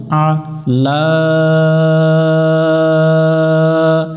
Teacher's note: আইন অক্ষর একটু গলার মধ্য থেকে আমরা চেপে উচ্চারণ করব আ লা লামের উপরে খাড়া জবর এটা এক আলিফ এক আলিফ